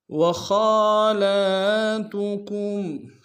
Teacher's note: خا کے اوپر کھڑا زبر ہے، خا کو موٹا ادا کریں گے۔